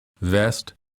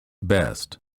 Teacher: for the V sound, the upper teeth touch the lower lip. For the B, both lips touch and fully close so that no air escapes.